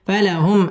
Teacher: মিম সেকিন ইজহারে খাস গুন্না ছাড়া পড়তে হবে